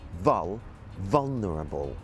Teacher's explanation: And the emphasis is on the first syllable, vulnerable.